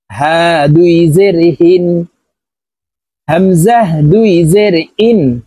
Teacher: হামজাহ এই দুইটি হরফ হলকের শুরু থেকে উচ্চারণ হবে